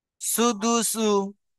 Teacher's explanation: সিনের উপরে পেশ আছে, পেশটি হলো হারাকাত, হারাকাতকে টান না দিয়ে তাড়াতাড়ি পড়তে হয়। দালের উপরে পেশ আছে, পেশটি হলো হারাকাত, হারাকাতকে টান না দিয়ে তাড়াতাড়ি পড়তে হয়।